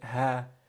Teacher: Ha is a throat letter. It's at the bottom of the throat along with Hamza.